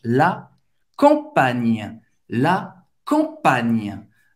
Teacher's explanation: esse GN é um pouco similar ao NH, é um pouco mais forte, ele usa mais a língua do que o NH em português. Existe um bloqueio na língua para esse som sair mais forte.